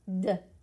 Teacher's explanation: Touch your throat, make the D sound. D. It's vibrating